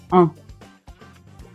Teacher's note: l'air passe par la bouche et il passe un petit peu par le nez. C'est pour ça qu'il y a cette petite tilde qui représente l'air qui passe dans le nez. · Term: voyelle nasale